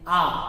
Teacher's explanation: आ में देखो मुख सबसे ज्यादा खुल रहा है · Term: विवृत्त